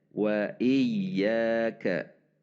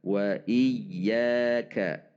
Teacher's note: intonasi kita yang meningkat pada ya karena huruf ya yang 2 harokat.